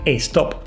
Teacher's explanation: se estaba riendo de mi acento español por decir stop, con una E innecesaria al principio